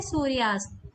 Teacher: तो अस्त में पहला वर्ण है अ। तो अ और अ के मिलने पर आ की ध्वनि बनती है या आ बन जाता है। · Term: दीर्घ संधि